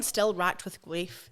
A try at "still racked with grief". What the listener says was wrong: You said grief. Grief. Grief. Still, you actually said still whacked. Whacked with grief. With grief.